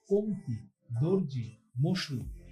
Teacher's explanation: হলন্ত ধ্বনির পরে ই, উ, রি বা জ ফলা থাকলে আদ্য অ এর উচ্চারণ ও হয়।